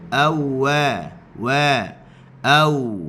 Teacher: Ataupun kita hanya sekadar istidaratul fam, kita tolak sikit mulut kita ke depan. Huruf waw dari sudut makhrajnya dia adalah istidaratul fam. Dia bukannya dhammus syafatain, bukannya muncungkan mulut.